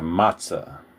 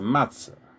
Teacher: Where I'm from, we pronounce it matz-uh. Like a UH at the end